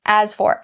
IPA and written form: æz fɔːr (as for)